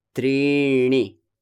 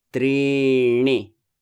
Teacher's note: When you say trini, your tongue has to bend inward. It has to flex inside your mouth.